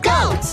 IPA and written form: gəʊt (goat)